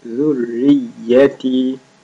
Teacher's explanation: That is soft and را and يا both have شدّاز, so you make them double.